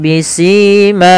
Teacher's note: pada lafal si dan ma ini sama sebagaimana ketika kita memanjangkan mu, yaitu dia mad tabi'i, panjangnya 2 harakat. Kemudian pada lafal bisimahum fayukhadhu, ada mim mati bertemu dengan huruf fa, maka ini kita namakan dengan bacaan izhar syafawi, yaitu suara huruf mim dibaca dengan jelas.